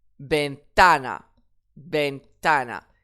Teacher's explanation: Effectivement, le mot se termine par une voyelle. Donc, j'accentue sur l'avant-dernière syllabe puisqu'il n'y a pas d'accent déjà.